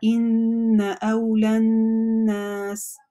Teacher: Все, фатха уже здесь не произносится. Вообще эта буква «гамза» уже не произносится. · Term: гамзатуль-васль